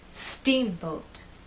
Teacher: the word is the stressed part so when we say Steamboat I want the first part to be loud and the second part to be softer · we also need to make that first part longer, and then the second part will be shorter.